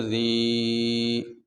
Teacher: یا ساکن ہے اور اس سے پہلے یہ زیر ہے، تو یہ حروف مدہ میں سے، اس لیے اس کو لمبا کرتے ہیں۔